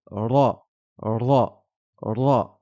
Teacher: Il faut lever la langue pour qu'elle touche le palais, qu'elle frappe le palais. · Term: R roulé